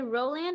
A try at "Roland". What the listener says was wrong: Both are correct. In French, the D at the end is silent. It should be Roland. Roland, like most American call me, which is okay.